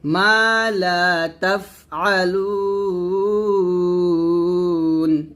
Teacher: তাফ এখানে বাতাস বের করবেন, মা লা তাফআলুন, এভাবে একসাথে।